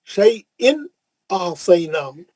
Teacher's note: تنوین کا اظہار حلقی حرف حمزہ ہے